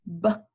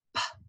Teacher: Those sounds are extremely close together. So if you say B, it's voiced, you can feel it in your throat. But if you say P, you do the exact same thing with your mouth, but it's unvoiced.